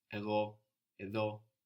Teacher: Where is the stress on these words? Εγώ, εδώ. At the end.